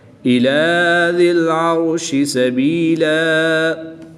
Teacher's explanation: دو زبر کی تنوین کو وقف کی حالت میں الف مدہ سے تبدیل کر کے پڑھیں گے۔